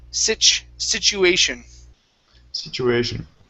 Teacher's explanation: it's situ with the CH sound